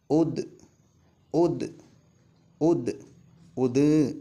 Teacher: ശബ്ദം നടക്കരുത് നീളരുത് കാറ്റും വരാനും പാടില്ല